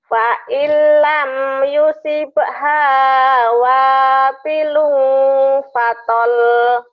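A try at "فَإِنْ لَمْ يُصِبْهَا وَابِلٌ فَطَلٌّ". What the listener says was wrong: Fatal? Fa illam yusibha wa bilum fatal. Fatal? Ayo, jangan ditahan ujungnya.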